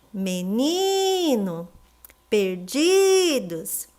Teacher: Vocês repararam que a penúltima sílaba dessas palavras é que são as mais fortes? Então elas são paroxítonas.